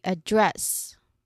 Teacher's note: The words or yeah, the verbs, their pronunciation are usually focusing on stressing the second syllable. So here, the second syllable is dress, so we stressed that.